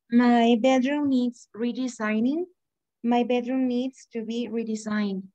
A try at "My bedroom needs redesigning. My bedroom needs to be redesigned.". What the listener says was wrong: Excellent. Good pronunciation.